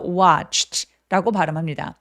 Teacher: 맨 마지막에는 무성음이죠. 성대가 울리지 않는 추트 이런 소리를 냈어요.